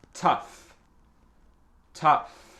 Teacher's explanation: c'est le son F et le OU c'est pas AO ou OU, c'est E